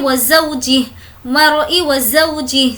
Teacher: ज़ौ यहाँ पर हमें खींचना नहीं है क्योंकि ये वाव लीन है , वावलीन, वाव जिस पर जज़म हो और उससे पहले ज़बर